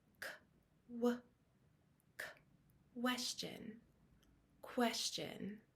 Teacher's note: It can also be spelled with a QU, like the word question. Here that question has a very small k sound before the w.